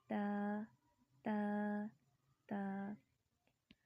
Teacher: تا کی ادائیگی میں زبان کی نوک کو سامنے والے اوپر کے 2 دانتوں کی جڑ سے لگا کر باریک آواز میں پڑھیں